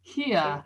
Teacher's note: R di belakang, British don't read it